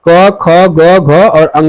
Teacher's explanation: उच्चारण स्थल की तो क वर्ग जो है क वर्ग कहां से होता है? क वर्ग का उच्चारण जो है कंठ से होता है।